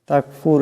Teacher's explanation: ফিতনাতুন এখানে তার উপর দুই পেশের তনবিন, এরপরে ফা আসছে, এখানে অবশ্যই গুণনা হবে একফার, একালে পরিমাণ গুণনা করতে হবে। তাকফুর এখানে রা সাকিন, এটাকে মোটা করিয়া উচ্চারণ করতে হবে